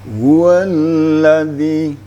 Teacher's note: Kalau Bayati Nawa sedikit awal ayatnya diangkat